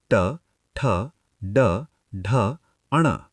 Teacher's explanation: जीभ मुड़कर पीछे जा रही है। इसे मूर्धन्य यानी रेट्रोफ्लेक्स कहते हैं।